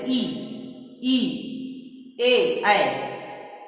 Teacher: हमारे जो ओंठ हैं वह गोल न होकर खुले हुए होते हैं, जिसे अबोली कहेंगे।